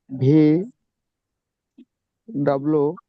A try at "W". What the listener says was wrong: আচ্ছা, ডাব্লিউ না, ডাবল ইউ।